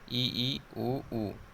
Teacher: दोनों ई और दोनों ऊ को बोलने में मुंह जो है लगभग बंद सा हो जाता है, तो इसे संवृत बोलते हैं, ई ऊ।